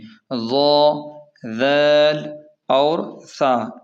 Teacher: یہ زبان کی نوک کو اوپر کے دانتوں کے کنارے سے لگا کر نرمی سے ادا کیے جاتے ہیں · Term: حروف نرم